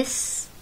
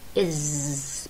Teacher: ألفظي إس بتحسي الصوت، عفوا نفس مخرج الصوت، الصوت نتج من التقاء الأسنان سوا، إس وإز نفس المخرج بالضبط، بس الفرق إنه الإز في فايبريشن، في اهتزاز بالأحبال